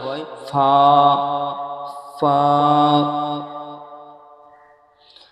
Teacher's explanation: নিচের ঠোঁটের ভিজে অংশ এবং সামনে উপরে দুই দাঁতের আগার সাথে লাগিয়ে উচ্চারিত হয় ফা